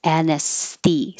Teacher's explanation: It is weird and kind of difficult to go from the S to the TH in anesthesi. So your S may be more in the middle behind the teeth because it's getting ready to come forward for the TH, which is between the teeth. Anesthesi. So keep the airflow going as much as possible.